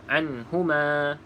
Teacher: izhar Maksudnya kita tidak boleh baca dengung